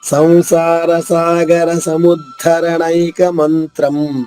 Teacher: ఇక్కడ ధా కింద ధా అవుతుంది, మహాప్రాణము నొక్కి చెప్పాలి